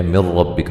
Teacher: نون ساکن کا ادغام بلا غنہ ہے، غنہ نہیں کریں گے